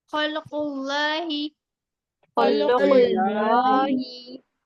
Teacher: खलकुल नहीं होगा, लाम पर जज़म है, हरकत नहीं है लाम पर।